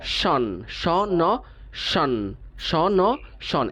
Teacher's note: স ন শন শন এটাকে বলা হয় সিলাবিক কনসোনান্ট ঠিক আছে স এবং ন এর মাঝখানে কোনো ভাওয়াল সাউন্ড নেই এটা হচ্ছে সিলাবিক নয়ের মাধ্যমে এই সিলেবলটা তৈরি হয়েছে এটা নিয়ে